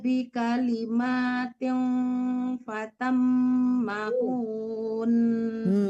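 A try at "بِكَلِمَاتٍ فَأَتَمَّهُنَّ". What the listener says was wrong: Jangan hunya yang dipanjangkan. Rabbuhu bikalimatin fa'atammahun. Hunya itu langsung ditasdidkan. Nah itu yang akan dilamakan karena nun bertasdid itu dangung gitu, gunah gitu.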